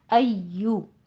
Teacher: ایشو نہیں کہنا ہے، شین یا جیم کا ساؤنڈ نہیں لانا ہے